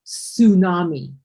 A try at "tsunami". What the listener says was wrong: The T is silent. You don't pronounce the T.